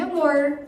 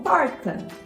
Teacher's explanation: a língua parte da região dos alvéolos e faz um movimento para trás, gerando uma retroflexão na produção do som. Geralmente acontece no final das palavras, como em amor. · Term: retroflexo alveolar vozeado